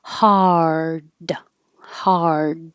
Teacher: hard is the same ah as hot but your tongue has to curl back for the r